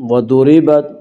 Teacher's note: ما سألتم وضربت، ضاد کو پر پڑھیں گے، ضاد حروف مستعلیہ میں سے ہے۔ وضربت، را کو باریک پڑھیں گے، را کے نیچے زیر ہے